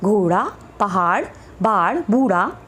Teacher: उत्क्षिप्त व्यंजनों के उच्चारण में जीभ ऊपर उठकर पहले मूर्धा को स्पर्श करती है और तुरंत झटके से वो नीचे गिरती है